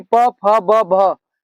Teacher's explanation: प वर्ग यानी प, फ, ब, भ का उच्चारण स्थान ओष्ठ होता है